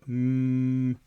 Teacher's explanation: You'll feel some air coming out from your nose, not from your mouth. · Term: nasal sound